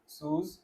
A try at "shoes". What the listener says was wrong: आपने इसको सूस क्यों बोला? हाँ, एस एच है।